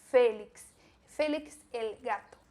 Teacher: e a pronúncia do E de novo, E fechado, não é Félix, é Félix.